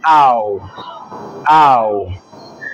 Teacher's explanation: you pronounce the first sound while your tongue Glides towards the second sound